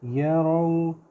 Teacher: را پتلا نہیں ہے، تھوڑا موٹا کریں گے